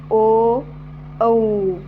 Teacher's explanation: जे मुखाची रचना होत असतानी ओठांचा आकार कसा होत तर गोलाकार होते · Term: कंठोष्ठ